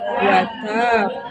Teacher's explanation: Condong ke fathah. Ingat condongnya ya. Berarti 70% nih, tidak 100%. Tapi bukan be, bukan bu. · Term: qalqalah